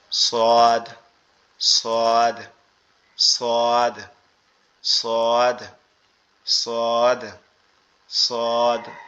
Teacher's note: আমাদের জিহ্বার আগা নিচের দুই দাঁতের আগা এবং গোড়ার সঙ্গে লাগবে, নিচের দুই দাঁতের আগা এবং গোড়ার সঙ্গে লাগবে, লেগে উচ্চারিত হবে একটু মোটা আওয়াজে সদ, সদ, সদ, সদ, সদ, সদ, এভাবে